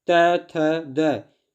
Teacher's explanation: दंत व्यंजन जो दांतों की सहायता से वर्ण बोले जाते हैं उसे दंत व्यंजन कहा जाता है। त, थ, द जब हम इनके उच्चारण करते हैं तो जो जीभ है वो दांत को स्पर्श करता है, इसलिए दंत व्यंजन इन्हें नाम दिया गया।